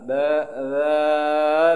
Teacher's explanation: জিব্বার আগা উপরের দাঁতের আগার সাথে লাগিয়ে উচ্চারণ হবে